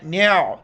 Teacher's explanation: کو ہم موٹا کر کے پڑھیں گے، نون عین زبر نع، عین کو گلے سے ادا کرنا ہے